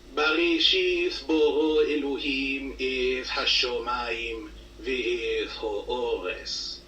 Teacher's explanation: you'll notice that the t sound of contemporary Hebrew is understood to be a th sound.